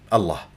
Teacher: تكور الشفاه دائما كما اذكر لحضراتكم عند نطق اسم الجلال بلام مفخم